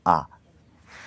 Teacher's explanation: ঠোঁট সবচেয়ে যখন বেশি পরিমাণ খোলে তখন আমরা কি বলতে পারি? বিবৃত